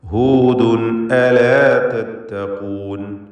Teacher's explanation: ഹൂദുൻ എന്നതിലെ തൻവീനിനെ ഇദ്ഹാർ ഹൽക്കി നൽകി മണിക്കാതെ വെളിവാക്കേണ്ടതാണ്. ശേഷം ഹൽക്കിൻ്റെ അക്ഷരമായ ഹംസ വന്നിരിക്കുന്നു. · തത്തഖൂൻ എന്നതിൽ ഖാഫിന് തഫ്ഖീം കൊടുക്കുക, തടിപ്പിച്ച് ഉച്ചരിക്കുക